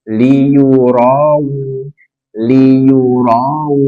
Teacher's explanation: Berarti di sini ada wawu sukun sebelumnya fathah. Bacaan lin, bacaan lembut, tanpa penekanan.